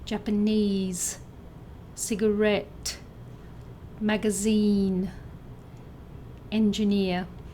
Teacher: Words that sound like 'Mandarin', with the stress on the third syllable